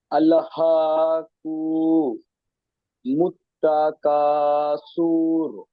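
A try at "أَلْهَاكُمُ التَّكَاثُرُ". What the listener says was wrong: সুর, সুর এখানে পেশ এসছে, টান হবে না। কাফের ওপরে পেশ এসছে, হারকাত, হারকাতকে তাড়াতাড়ি পড়তে হয়। কুমুত তাকাসুর। আলহাকুমুত তাকাসুর।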